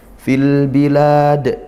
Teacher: Fil bilad, nah ini al bertemu huruf ba, dibaca jelas ya, lam sukunnya dibaca, yang ini izhar qamariyah.